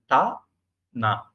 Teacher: தா சொல்றது மாதிரி மூக்கால காத்து விட்டா நான் வந்துடும் · நாக்குக்கு வெளியே நுனிநாக்கு, பல்லுக்கு இடையில நுனிநாக்கு வரணும் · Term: சரியான உச்சரிப்பு